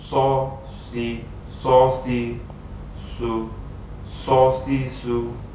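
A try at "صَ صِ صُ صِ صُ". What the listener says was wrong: Nah, agak sedikit kurang ya untuk itbaqnya, masih belum, lidah belakang masih belum naik.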